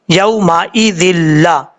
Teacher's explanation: دو زیر کی تنوین کے بعد لام آ رہا ہے، لیکن ادغام کے ساتھ ساتھ غنہ نہیں ہو رہا